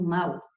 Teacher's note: O A é sempre vogal. O U foi pronunciado na mesma sílaba com a vogal, então aqui você tem semivogal.